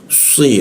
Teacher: huruf si lidahnya dilengkungkan posisinya di bawah di belakang gigi bagian bawah